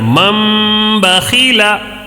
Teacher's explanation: تنوین یا نون ساکن کے بعد با آئے تو نون کو میم سے بدل کر غنہ اور اخفا کے ساتھ پڑھیں گے۔